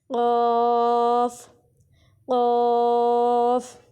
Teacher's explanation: ایک تو ہمارے ہونٹ تھوڑے سے موٹے ہوں گے, اور دوسرا یہ حلق سے نکلتا ہوا محسوس ہوگا